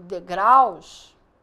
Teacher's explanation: quando eu tenho degraus é com u não é com l degraus o a é falado com mais força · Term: ditongo